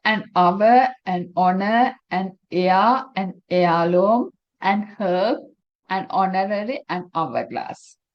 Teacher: when we pronounce these words, we don’t pronounce “h”. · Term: silent “h”